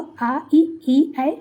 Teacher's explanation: जो होठ होता है यानी लिप्स होते हैं वो गोल नहीं होते बल्कि ऊपर नीचे फैल जाते हैं, तो अवृत्ताकार या अवृतमुखी स्वर होते हैं। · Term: अवृत्ताकार स्वर